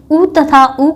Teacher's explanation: आगे देखते हैं उ तथा उ का उच्चारण स्थान ओष्ठ है, यानी जब हम उ तथा उ का उच्चारण करते हैं तो हमारे होठ आपस में स्पर्श करते हैं